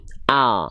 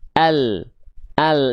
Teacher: dari samping lidah depan kanan dan samping lidah depan kiri, keduanya menyusur sampai ke ujung lidah. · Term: huruf lam